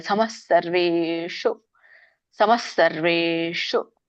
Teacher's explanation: ಸ ಒತ್ತಿ ಹೇಳಿದಾಗ ನಮಗೆ ಹ ಕೇಳಿಸುತ್ತೆ · ಶು ಮೂರ್ಧನಿ ಇದೆ ವೇ ದೀರ್ಘ ಇದೆ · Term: ವಿಸರ್ಗ